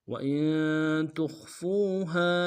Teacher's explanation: تا کو خا کے ساتھ ملانا ہے، خا کو موٹا ادا کریں گے